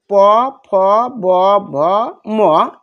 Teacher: দুই ঠোঁটের সংস্পর্শে এটা উচ্চারিত হয়, এজন্য এটা ওষ্ঠবর্ণ।